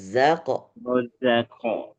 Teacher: Kalau saya mendengar masih huruf J yang dibaca rojako